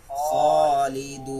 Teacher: Kho tebal mempunyai sifat isti'la